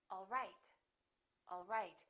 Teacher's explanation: as a statement and i can say all right all right my pitch goes down at the end for a statement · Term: falling intonation